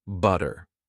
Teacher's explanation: If you want to sound more British, you would pronounce the T clearly